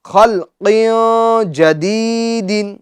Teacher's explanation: جی، اب یہ جو لام ہے، لام کے سکون کو ہم کیا کریں گے، اس میں جماؤ کریں گے، یعنی لام کے سکون میں جنبش نہیں دیں گے، خلقین نہیں، خلق جدید، خا کو بھی پور کریں گے، قاف کو بھی پور کریں گے، کیونکہ یہ حروف مستعلیہ میں سے ہے، اور قاف کی تنوین میں غنہ اخفا ہوگا، ٹھیک ہے، غنہ کر کے پڑھیں گے، یعنی ناک میں آواز لے جائیں گے تنوین کی